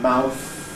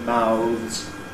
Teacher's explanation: voiceless in the singular, but ‘mouths’ /maʊðz/, voiced in the plural